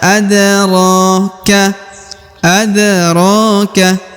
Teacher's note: huruf RO dipanjangkan dua harakat ya kenapa Karena di atasnya terdapat Alif kecil W adroka adroka